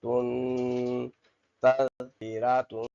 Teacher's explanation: حروف تنوین ہے غنہ کریں گے ناک میں آواز پیدا کریں گے